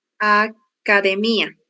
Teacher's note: O mi foi a sílaba mais forte que você pronunciou